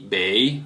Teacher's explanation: bei on the third tone